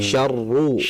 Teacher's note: Jadi ditebalkan ra damah syarru